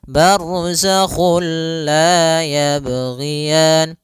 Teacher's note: Nah, idgham bilaguna juga sendiri itu idgham yang kita namakan juga idgham kamil, yaitu kita memasukkannya secara utuh, secara seluruhan kepada huruf lam sehingga tidak menyisakan sedikit daripada bunyi huruf nunnya ya. Sehingga langsung masuk barzakhulla dan dia bila ghunah berarti tidak boleh disertai dengan ghunah. · tidak boleh disertai dengan gunnah, tidak boleh ada penahanan, tidak boleh barzakhul la, enggak boleh, tapi langsung saja barzakhul la yabghiyan. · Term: idgham bila gunnah